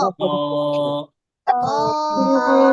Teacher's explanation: মুখটাকে হালকা খোলা রেখে একটু খ খ আওয়াজ হবে, খরখর আওয়াজ হবে। খ, খ একটু টান দিতে হবে।